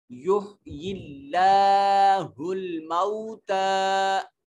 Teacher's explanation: یحیی اللہ کے لام کو موٹا نہیں کریں گے کیونکہ کلمہ جلالت سے پہلے زیر آ گئی۔ جب کلمہ جلالت سے پہلے زیر آ جائے تو کلمہ جلالت کی لام کو موٹا نہیں کرتے۔